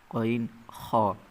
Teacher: হালকে বা কণ্ঠনালীর শেষ ভাগ হতে উচ্চারিত হয়